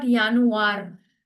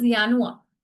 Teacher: you do not roll the R's, especially when they are at the end of the word.